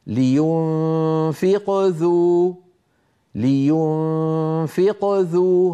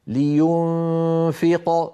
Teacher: لينفق ذو، هنا القلقلة صغرى، ولو وقفت فقلت لينفق صارت القلقلة كبرى